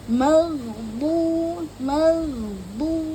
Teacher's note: makhrajul huruf pada D yaitu ee Sisi lidah dengan geraham gigi atas ya jadi dia tebal Isti la ya magdu magdu ya magdu pastikan mencucu pada D